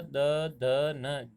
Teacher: जीभ का अग्रभाग है, ये दांतों से टकराता है, इसीलिए इसको दंते वर्ण कहते हैं।